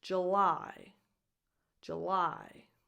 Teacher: The stress is on the 2nd syllable, lie. So the U in the first syllable here doesn't have a long sound.